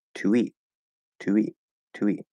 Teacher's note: And so if there's a vowel sound after to, it's still not guaranteed, it's not a rule, you don't have to do it, but it becomes a little more likely that what can happen, is that we'll actually keep the oo, link it with a small w